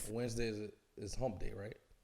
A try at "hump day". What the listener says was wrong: you sound like you're saying home day.